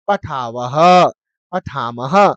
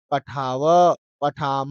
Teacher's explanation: तो अब यहां पे विसर्ग का उच्चारण नहीं करना